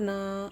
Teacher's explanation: الف مدہ ایک الف کے برابر کھینچ کر پڑھیں گے